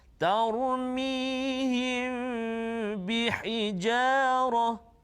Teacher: bila mim mati bertemu dengan ba, nama dia ikhfa syafawi, dan kita kena dengung dengan kadar 2 harakat